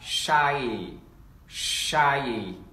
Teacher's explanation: Và chúng ta sẽ đánh vần như sau, chúng ta đọc là shy, shy, ok. Âm đó, âm sờ nặng thì chúng ta chua môi ra